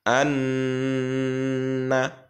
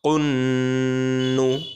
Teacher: নুনে তাসদিদ হলে গুন্না উচ্চারিত হবে।